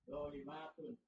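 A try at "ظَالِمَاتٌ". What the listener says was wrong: Ulang. Zonnya aja yang panjang, yang lain pendek.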